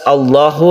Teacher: lafadz Allah ini dibaca tebal atau tafkhim karena sebelumnya ada fathah